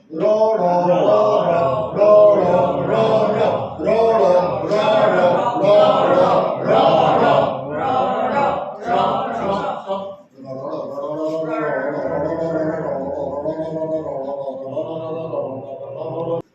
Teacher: জিভের ডগা মুদ্রা থেকে সপাটে নিচের তলায় এসে আছাড় খায়, তাই র। তাহলে দুটো তো তফাৎ, র কম্পনজাত ধ্বনি, র র নিচে এসে আঘাত খাচ্ছে। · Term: র তাড়নজাত ধ্বনি